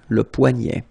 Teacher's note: this combination of ET at the end will basically open the sound, so you get poignet.